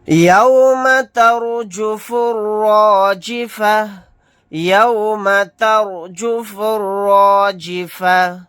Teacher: یہاں پر رائے ساکنہ سے پہلے زبر ہے، یہاں پر رائے ساکنہ کو موٹا یعنی پر پڑھیں گے، پھر یہاں پر بھی را کو موٹا یعنی پر پڑھیں گے۔